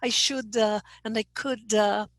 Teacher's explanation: trying to stop at this top consonant but it's so difficult so a little schwa gets in the way